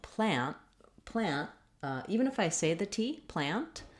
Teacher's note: my N does not last very long. It's fairly short. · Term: very short N